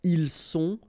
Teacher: Ils sont, final T not pronounced.